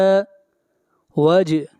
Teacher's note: جیم کے اوپر قلقلہ کریں گے